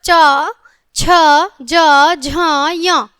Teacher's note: च वर्ग होता है बच्चों च, छ, ज, झ, य। तालु का जीवा के अग्र भाग से स्पर्श तालव्य होता है